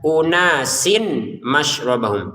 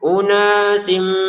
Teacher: Ya kan tanwin kasrah kan kita baca sin. Karena di depannya ada mim kita enggak baca sin lagi. Tapi bacanya sim. Kita masukkan ke mim. Dengungannya ditahan.